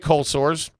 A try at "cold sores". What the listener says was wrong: I hate the way you say it. So cold sores. You don't hit the D. Cold sore.